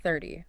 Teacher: in American English, that middle T sound changes, right? Yes, it sounds like a soft D.